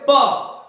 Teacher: जब आप बोलोगे तो आपके होठ टकरा जाएंगे। यहां से श्वास वायु आई लेकिन आपके होठ टकरा गए, जिसकी वजह से रुकी फिर बाहर गई।